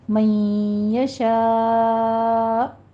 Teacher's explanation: آگے حمزہ آ رہا ہے ہمارے پاس، اس پر آپ نے جھٹکا دینا ہے تھوڑا سا